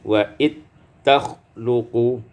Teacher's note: diidghamkan zal pada ta menjadi wa it takhluqu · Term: idghamul zal fit ta